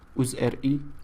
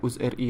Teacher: There's definitely a glottal stop there.